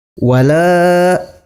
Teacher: Dalam kalimat ini terdapat hukum bacaan atau tajwid mad tabi'i, dibaca panjang sebanyak 2 harokat.